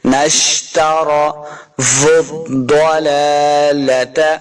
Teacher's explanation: تارو، را کو پر پڑھیں گے